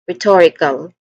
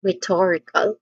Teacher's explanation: Stress syllable is on the second syllable